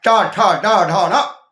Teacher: फिर जिह्वा को मोड़ा, और मोड़ने के बाद मुड़वी, बंधने धातु है, मूर्वती मूर्धा, ढंग प्रत्यय लगा, जहां से जिह्वा को मोड़कर ऊपर वाले जबड़े में स्पर्श कराया। टा ठा डा ढा ना, यहां उच्चारण की शक्ति आई।